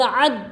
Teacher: دال دیکھو حروف قلقلہ میں سے ہے تو ٹکر کھا کر الگ کریں گے آواز کو